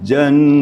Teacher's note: Nun musyaddadah atau mim musyaddadah maksudnya nun bertasydid dan mim bertasydid itu digunakan. Namanya dalam istilahnya adalah wajibul gunnah. Wajib berdengung. Wajib sengau. Kapasitas dengungnya kalau dalam tilawah adalah 3 harakat.